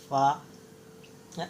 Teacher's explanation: ثنایا، جیسے کہ فا ہے، ثنایا علیا کا کنارہ اور نیچے کے ہونٹوں کا تری والا حصہ، نیچے کی جو ہونٹ رہتے ہیں اس کا تری والا حصہ، تری یعنی گلا ہوا حصہ فا۔ اوپر کے دانتوں کو نیچے کے ہونٹ جو گیلے والے حصے رہتے ہیں وہاں لگائیں گے تو فا ادا ہوگا